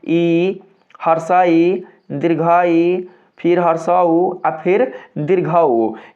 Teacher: इन चार वर्णों के उच्चारण में जो मुख है वो दोस्तों थोड़ा बंद हो जा रहा है। ठीक है? यानी कि कम मात्रा में जो मुख है वो खुल रहा है। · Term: संवृत वर्ण